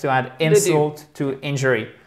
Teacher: c'est que des voyelles courtes et que des accents toniques sur la première syllabe